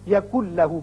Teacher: نون ساکن کے بعد جب لام آ جائے تو وہاں ادغام تو ہوتا ہے لیکن غنہ نہیں ہوتا. اب نون نہیں پڑھا جائے گا، کاف کی آواز لام سے سیدھی ملے گی.